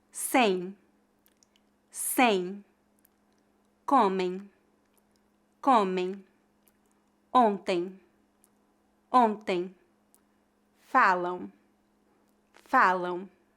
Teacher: ão e o de tongo e m é pronunciado como em a letra M Não é pronunciada · Note que palavras que terminam com as letras AM ou EM, apesar de não serem escritas com duas vogais, são pronunciadas como ditongos. O ditongo AM é pronunciado como ão e o ditongo EM é pronunciado como em. A letra M não é pronunciada.